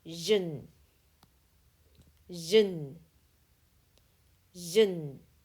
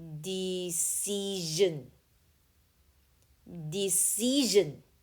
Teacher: Sion is voiced and says jen when the letter before is a vowel.